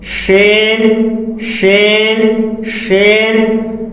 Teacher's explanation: جیم شین یا غیر مدہ زبان کے بیچ اور اس کے مقابل اوپر کے تالو سے ادا ہوتے ہیں